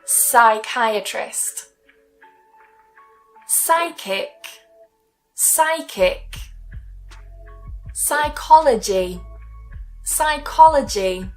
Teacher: not only is the P silent, but the H is silent as well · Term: silent P